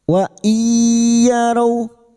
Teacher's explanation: idgam ghunah masuk dengan mendengung masuk pada huruf ya dan mendengung selama tiga harakat